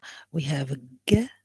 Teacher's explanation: when you pronounce g, you feel the back of the tongue like this in here against the velum or the soft palate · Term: velar sounds